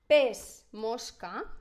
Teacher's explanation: la S sorda, però la M és sonora. Hem de saber que les laterals, les vibrants i les nasals, són sempre sonores.